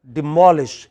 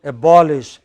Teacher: There are some other words where you have a stress on the pre-final syllable, such as demolish.